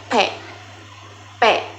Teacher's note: Huruf P dibentuk dengan menghasilkan bibir atas dan bibir bawah serta menghasilkan suara yang tidak bersuara atau disebut letup bilabial